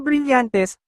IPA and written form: bɾiˈʎɐntɛs (Brillantes)